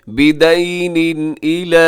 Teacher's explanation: یہاں اظہار حلقی ہوگا، یعنی یہاں پہ غنہ نہیں ہوگا بلکہ آپ نے تیزی سے پڑھنا ہے۔